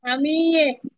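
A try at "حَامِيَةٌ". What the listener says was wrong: এ না আপু, ইহ, হামি ইয়ে।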